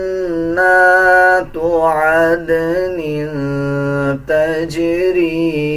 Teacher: نون کے اوپر شد آ رہا ہے، غنہ کیا جائے گا اور غننے کی آواز کو ناک سے نکالا جائے گا